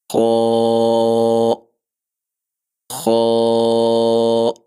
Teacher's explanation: اس کے بعد ہمارا اگلا حرف خو۔ زبان کی جڑ اوپر آپ کا جو تالو ہے اس کی طرف اٹھے گی